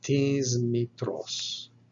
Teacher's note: your sigma coming before a voiced consonant will be pronounced with a Z sound